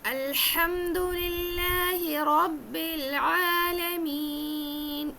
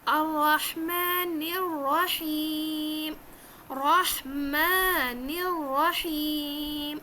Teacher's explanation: ایک تو را کو موٹا کرنا ہے، را کو 2 بار پڑھنا ہے کیونکہ تشدید ہے. دوسرا ہا کو حلق سے نکال کے پڑھنا ہے.